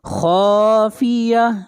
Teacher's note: خا کو موٹا پڑھیں گے، خا حروف مستعلیہ میں سے ہے، اور آخر میں گولتا ہے، جب اس کے اوپر وقف کریں گے تو یہ ہا بن جائے گا.